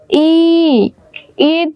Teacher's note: যখন বলি তখন জিহ্বাটা দেখো তালুর দিকে উঠতে চায় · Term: তালব্য